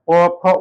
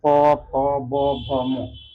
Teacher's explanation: ओठ में ओठ जब सटता है तो प का साउंड निकलता है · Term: प वर्ग